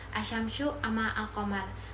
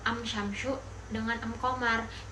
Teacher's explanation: Nah, Tamtamania ini bahasa sebagian kabilah Arab di mana huruf alif lam ta'rif diganti dengan alif dan mim yang pengucapannya itu lebih condong ke huruf mim